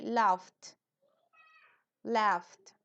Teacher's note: Entonces, laugh es reírse, laugh es reírse, esa GH final se pronuncia casi como una F, entonces le agregan una T al final de la F, laughed, laughed, se rió, laughed, ¿ok?